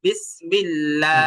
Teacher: আল্লাহ শব্দের লামে যে একটা খাগা জবর আছে খাগা জবর থাকলে কি করতে হবে এক আলিফ টানতে হবে